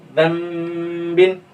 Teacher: नून की आवाज को हम किस में बदल देंगे, मीम में बदल देंगे, जन बिन, और थोड़ा सा गुनगुनाएंगे, ठीक है।